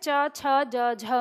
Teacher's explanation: च वर्ग को स्पर्श संघर्षी भी कहते हैं